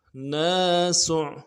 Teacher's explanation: سین کو عین کے ساتھ ملانا ہے، سین کی سیٹی باریک ہوگی اور عین کو موٹا ادا کرنا